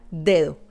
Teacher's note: La primera d es fuerte, la segunda suave.